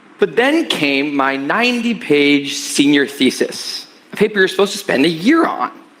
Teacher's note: he placed a higher pitch on the word year to emphasize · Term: highlighting important information